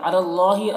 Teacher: اللہ کو پر پڑھنا ہے، کھڑا زبر ہے جو الف مدہ کی طرح ہے